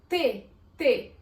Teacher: O T, ao ser pronunciado, esbarra no dente e na língua ao mesmo tempo, por isso que ele é classificado como língua dental.